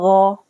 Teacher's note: गाइन की आवाज़ मोटी होती है, गाइन हुरूफ मुस्तालिया है, गाइन जबर गो।